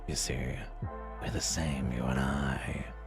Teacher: the voice is just dragging up across my vocal cords as opposed to being projected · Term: vocal fry